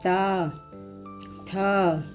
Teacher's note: त वर्ग के वर्णों को बोलने में जीभ दांत को छूती है।